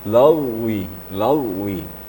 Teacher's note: Huruf ghain ini sifatnya rakhawah. Ya, tidak syiddah. Di suaranya mengalir waktu membacanya. Contohnya lagwi, lagwi.